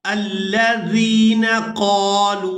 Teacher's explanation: जाल को नरमी के साथ अदा करते हुए या साकिन के साथ मिलाएंगे